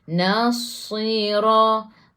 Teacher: Huruf sad kena ada macam bunyi angsa. Sebab dia sifat hurufnya safir.